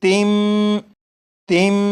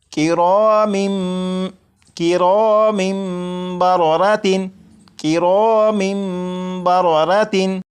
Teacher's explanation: जब तनवीन के बाद बा आ जाए तो तनवीन के अंदर जो नून साकिन की आवाज़ होती है उसे मीम से बदलकर गुन्ना करके पढ़ेंगे। जैसे यहाँ पर लिखा है तिन, इसे पढ़ेंगे तिम, तिम। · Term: इकलाब